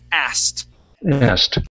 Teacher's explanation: If it's asking, yes, you pronounce the K. But once you add the ed on the end, that K disappears, and we say asked